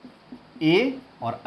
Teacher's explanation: ए और ऐ का उच्चारण स्थान दो है, कंठ और तालु दोनों से बोले जाते हैं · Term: कंठ तालु